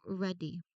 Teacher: You have the D right in the middle, and you can feel how the vibration connects the two vowels together.